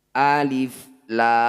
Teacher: Huruf kedua juga tidak ada tanda bacanya, yang ada hanya tanda mat. Jadi tetap dibaca huruf aslinya lam, hanya saja dipanjangkan 6 harokat.